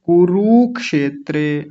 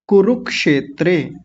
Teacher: और देखिए क पर छोटे ऊ की मात्रा है और र पर भी बड़े क्षमा कीजिए, क पर भी छोटे ऊ की मात्रा है और र पर भी छोटे ऊ की मात्रा है, दोनों पर एक ही मात्राएं हैं ये। तो कुरुक्षेत्रे जल्दी बोला जाएगा, छोटे ऊ की मात्रा जल्दी बोली जाती है।